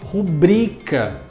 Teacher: Mas a palavra não é acentuada e é, portanto, paroxítona. A sílaba tônica é a segunda, bri. Então eu não falo rúbrica, eu falo rubrica.